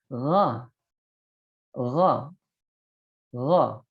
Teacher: Karena huruf ghain ini nanti di sifat-sifat huruf masuk huruf isti'adah. Ya, berarti ada sedikit terangkatnya pangkal lidah.